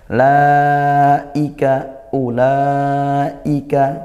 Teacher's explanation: Ulaika u-nya pendek ya itu di situ wunnya tidak dibaca mad tidak dibaca panjang. La i mad wajib muttasil dibaca panjang dua alif atau empat harakat. Hati-hati hamzahnya tetap dikuatkan ya.